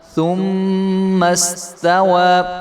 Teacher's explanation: یہ درمیان میں الف ہے یہ نہیں پڑھا جائے گا